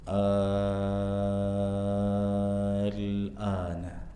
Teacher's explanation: Pada riwayat Imam Hafz alana ya tidak ada unsur tasydid di sana. Nah, a-nya kita baca enam harakat. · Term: mad lazim kalimi mukhaffaf